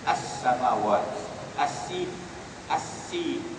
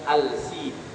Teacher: alif lam syamsiah ni kita sebut saja as-samawat, as-sin, as-sin, bukan al-sin.